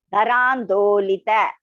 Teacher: It is not Taran. It is Da. Alpaprana there. Da is Alpaprana. Dolita. Do is also Alpaprana.